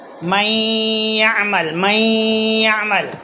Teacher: نون اور یا کی آواز 50-50 آنا، کوئی کم کوئی زیادہ آ جائے، جیسے 40-60، ہاں تو جو زیادہ ہے وہ صحیح نہیں ہے. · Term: ادغام ناقص